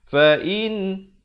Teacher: Bunyi saja in. Jangan panjang. Jangan dengung. Terus masuk. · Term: izhar halqi